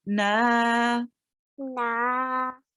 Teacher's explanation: So you made the noon longer. Make sure not to make it too long. Only 2 seconds.